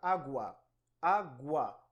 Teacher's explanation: crescente é aquele cuja estrutura é formada por semivogal + vogal o som da semivogal é mais baixo e o da vogal é mais alto veja na palavra água água o é mais fraco aí é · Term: ditongo crescente